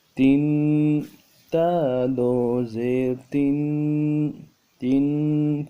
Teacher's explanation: تنوین میں غنہ کریں گے، غنہ کو ایک الف کی مقدار میں کھینچیں گے۔